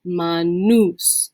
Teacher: here we have that long U with that oo sound